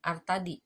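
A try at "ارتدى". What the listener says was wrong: Irtada. Itu bukan iya ya, karena kan dia nggak ada titiknya. Irtada bukan irtadi. Irtada.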